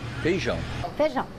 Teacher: Em muitas regiões, a vogal I, quando está com outra, desaparece. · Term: A gente engole o I